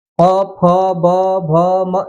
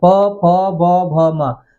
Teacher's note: जब इनका उच्चारण करेंगे तो दोनों ओठ एक दूसरे से स्पर्श करते हैं है ना तब जाकर के इनका उच्चारण किया जा सकता है